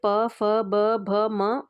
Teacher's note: प वर्ग जो आपका होता है ना, वो उसका उच्चारण जो है वो आपका ओष्ठ से किया जाता है